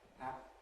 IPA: hæp